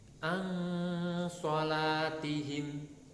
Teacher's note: Itu ada nun sukun ketemu shad. Ini dibaca samar, biasanya mendekati ng kalau nun sukun ketemu shad. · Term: ikhfa